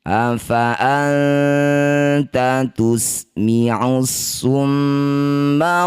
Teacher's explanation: Mim atau nun bertasydid disebut bacaan gunnah musyaddadah. Bunyi mim didengungkan dua harakat.